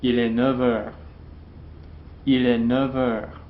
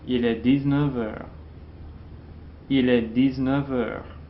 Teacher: The F in the neuf and the 19 will be pronounced as a V at the beginning of the next word